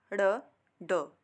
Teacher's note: द्विस्पृष्ट व्यंजन भी कहा जाता है, जो दो बार जीव के दो बार स्पर्श करने से, और ताड़न जात भी कहा जाता है जीव के मूर्धा पर मारने से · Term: उत्क्षिप्त व्यंजन